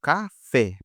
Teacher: Pode ver que o fé é a sílaba mais forte